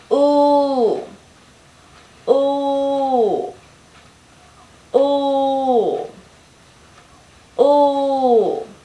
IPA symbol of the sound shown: u: